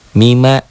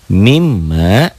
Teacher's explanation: Jadi asalnya mima, kasih tasydid jadi mim, M-nya jadi double.